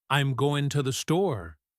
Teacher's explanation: The I am, to, and the are small and quick.